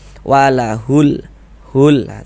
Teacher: Karena cara membaca huruf lamnya itu dia dibaca idhar qamari. Maksudnya dibaca idhar itu huruf lamnya dibaca jelas, terbaca huruf lamnya